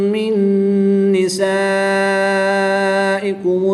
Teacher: نون ساکن کے بعد نون ہے تو یہاں پر ادغام مع الغنہ ہوگا، ان دونوں میں غنہ کر کے پڑھیں گے۔ یہاں پر بھی مد متصل ہوگی، یہاں پر بھی 3 سے 5 الف تک کھینچ کر پڑھیں گے۔